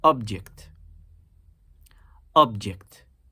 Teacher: We naturally emphasize the first syllable when we use this word in reference to an entity, an item